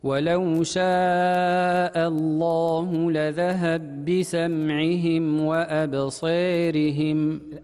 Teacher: بالإدغام في قوله لذهب بسمعهم، فقرأ لذهب بسمعهم وأمال قوله تعالى أبصيرهم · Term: الإمالة